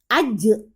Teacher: Pantulkan bunyi J-nya karena dia kolkolah.